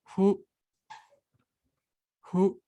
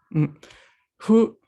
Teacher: Es un sonido que está intermedio, sin juntar mucho los labios, como haríamos al pronunciar la F, pero tampoco abriendo, separando mucho, como haríamos al hacer una H aspirada. Es algo aquí a mitad que hay que aprender a realizar.